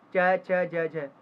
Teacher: च वर्ण का उच्चारण कहां से होता है तालू से होता है